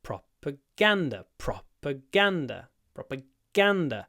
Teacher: there's a secondary stress on the pro and a primary stress on the G